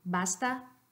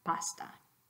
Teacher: Basta tiene el sonido sonoro B y pasta tiene el sonido sordo P.